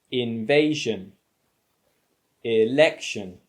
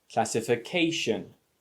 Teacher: these words have the stress on the penultimate syllable